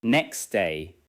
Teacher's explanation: the t in next may become very weak or disappear. It may sound more like next day. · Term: sound deletion